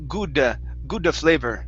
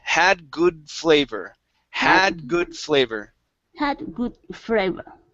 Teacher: adding an extra sound in between the d and the f